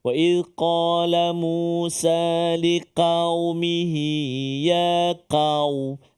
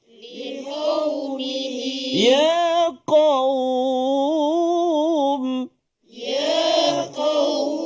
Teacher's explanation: Begitu juga dengan ya qaum, huruf qaf yang berdamping dengan dia huruf waw yang sukun, waw yang mati. Jadi kena hati-hati supaya qaf tu dia tak bunyi longgar ataupun ringan ataupun nipis.